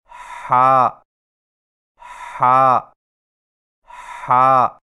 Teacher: ہا کی ادائیگی میں زبان کی جڑ کو حلق کی طرف مضبوطی سے دباتے ہوئے باریک اور رگڑ کھاتی سانس میں پڑھیں، یعنی ہا ہا ہا۔